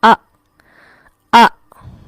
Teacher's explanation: حمزہ جب بھی ساکن ہو یہاں پر جھٹکے کی سی آواز ہوتی ہے